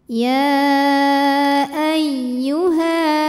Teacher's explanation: dibacanya ya Panjang boleh empat boleh lima harakat ya Ay masuk ke ya tasydid jangan sampai ditahan ini cukup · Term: Mad Jaiz munfasil